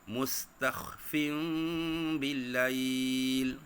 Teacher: kita kena tukarkan bunyi nun tu ataupun bunyi tanwin tu kepada mim dan kita dengungkan dia.